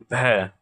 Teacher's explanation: हिंदी के स्पर्श घोष महाप्राण ओष्ठ्य व्यंजन ध्वनि है।